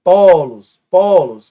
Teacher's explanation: Portanto, é uma paroxítona. Por quê? Porque a penúltima, né? Melhor dizendo, a penúltima é a mais forte.